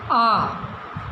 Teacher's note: विवृत का मतलब होता है सबसे ज्यादा मतलब पूरा मुंह खुलता है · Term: विवृत स्वर